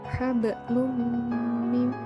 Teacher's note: tanwin bertemu dengan salah satu dari huruf ya nun mim wawu maka membacanya dimasukkan dengan dengung dua harokat atau satu alif · Contohnya pada ayat hablum mim masad, terdapat huruf lam berharokat tanwin dan ada nun mati bertemu dengan mim, maka dibaca idgham bigunah, yaitu dengan memasukkan tanwin ke dalam huruf mim sehingga huruf mim tampak bertasydid, dimasukkan dengan berdengung. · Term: idgham bighunnah